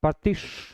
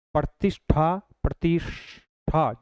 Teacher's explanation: और जब यह श होता है इस श के साथ में जब हम उच्चारण करेंगे प्रतिष् तो उसमें थ की जगह क्या हो जाएगा ठ बन जाएगा